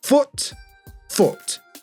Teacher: in the word foot, the vowel sound in the north and the vowel sound in the south is exactly the same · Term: foot-strut split